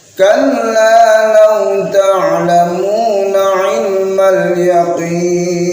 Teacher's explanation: Nah, sama ain dibaca ain, jangan sampai dibaca hamzah. Artinya beda.